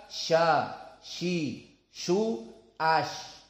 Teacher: Sya di sini makhrajnya adalah wastul lisan, di tengah lisan, dengan al-hanak al-a'la yang berhubungan dengan tengah lisan tadi. Maka sya, shi, shu, ash.